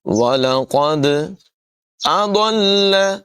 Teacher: ضاد جو ہے اس کی آواز پر ہوگی، لام کے ساتھ ملا کر پڑھیں گے، لام مشدد ہے، اس کو ذرا رک کر ادا کریں گے.